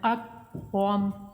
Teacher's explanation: را کو پور پڑھیں گے، میم سب کو ساکن کریں گے